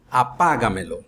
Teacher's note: e eu coloco dois pronomes, objeto direto e indireto, objeto indireto e direto, acrescento esses dois pronomes na palavra apaga, que é o verbo, e ela se torna uma palavra esdrújula, pois a maior força de voz está no pá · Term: sobresdrújula